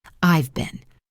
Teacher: The contraction I've, for I have, is pronounced clearly. The word been in this sentence is very quick and unstressed. It sounds like been.